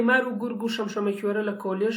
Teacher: Probably in other accents you don't write or you don't pronounce the small vowel at the end, but in Slemani you have to pronounce, you know, that short, not small vowel, short vowel at the end